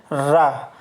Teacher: जीभ रोटेट होती हुई बाहर की ओर लुढ़कती से प्रतीत होती है। तो इसे रा को जो हम कहते हैं लुंठित व्यंजन, क्योंकि इसमें श्वास जीभ से टकराकर लुढ़कती सी प्रतीत होती है, लुढ़कती सी लगती है, तो इसलिए जो रा जो है वो लुंठित व्यंजन कहलाता है।